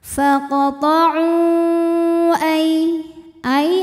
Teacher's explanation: ada ya sukun didahului harokat fathah, maka dibacanya lembut atau lunak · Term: harfulin